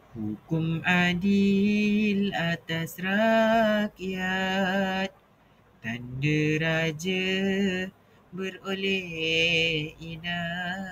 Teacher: Nada ayat kedua lebih menurun untuk menunjukkan kesimpulan moral bahawa keadilan membawa rahmat. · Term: intonasi menurun